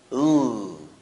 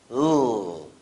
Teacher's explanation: It's called lateral because the tip of the tongue is placed on the alveolar ridge, and air escapes through the mouth laterally along both sides of the tongue. Again, that's lateral sounds and L.